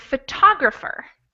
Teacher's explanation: you can tell that the second syllable is the stressed syllable or the most important syllable out of the four syllables and